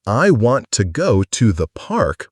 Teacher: the word park is the key piece of information, so it gets the stress